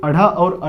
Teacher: तो ये बिंदी का नाम ही क्या है, ताड़न जात, क्योंकि जब आप इसे बोलेंगे तो जिह्वा ऊपर जाके झटके के साथ बाहर आती है, इसी कारण इसे हम ताड़न जात या फेंका हुआ कहते हैं, ठीक है।